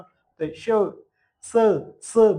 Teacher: हवा घासून बाहेर निघते म्हणून त्यांना घर्षके म्हणायच